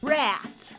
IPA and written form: ræt (rat)